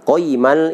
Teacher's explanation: Qayyimal itu tidak ada dengung, tidak ada harokat panjang, tidak ada ya, hanya qayyimal tanwin ketemu lam itu langsung lewat saja. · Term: idgham bila gunnah